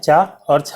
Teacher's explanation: चा और छा वर्ण का उच्चारण स्थान कौन सा है? तालु। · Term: तालब्य